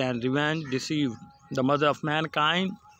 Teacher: The first syllable is unstressed and then stressed it, and this pattern goes on. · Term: iambic pentameter